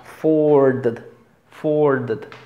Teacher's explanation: Aquí tenemos schwa y la O larguita.